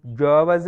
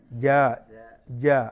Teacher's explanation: ഒന്നും അനങ്ങുന്നില്ല. യഥാർത്ഥത്തിൽ നാവിൻ്റെ മധ്യ നേരെ മേൽഭാഗമാണ് ജ എന്നാണ് പറയേണ്ടത്.